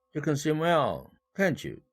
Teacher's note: 이 can't 부가의문문에서 이 조동사가 바로 대술부 역할을 하므로 일강세를 배정받았다